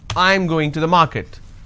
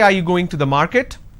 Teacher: when it's a question the last word has to be a rising tone